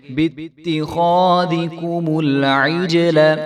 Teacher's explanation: انفسکم باتخاذکم غال کو بھی ہم لمبا نہیں ہونے دیں گے، باتخاذکم العجل تو آپ کو پتا ہے کہ جیم جو ہے حروف قلقلہ میں سے ہے، تو یہاں پہ جو ہے جیم ساکن ہے تو اس کو ہم ہلا کر پڑھیں گے